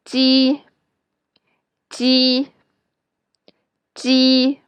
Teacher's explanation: When you pronounce ji in Chinese, your lips are spread wide, like when you are smiling.